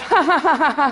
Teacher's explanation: So, for example, you find nasality in posed laughter, that kind of ha-ha-ha-ha sound, that you never get, you could not do if you were laughing involuntarily.